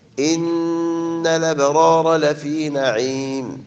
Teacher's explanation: إن نون مشددة فيها غنى